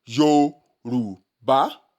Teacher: And the tonal marks for this word are re, do, mi, re, do, mi. The re will be applied on the o, the do will be applied on the u, and the mi will be applied on the a. This changes the pronunciation from Yoruba that we had initially to Yoruba, re, do, mi, Yoruba.